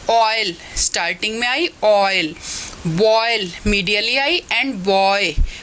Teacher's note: ओ बोलते हुए लिप्स की पोजीशन हमारी राउंडेड है, तो ये बैक राउंडेड वॉवल है. Between open and half open, open and half open के बीच में है.